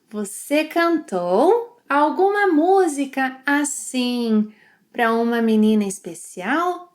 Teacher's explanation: He links 'para' and 'uma' and says 'pruma'.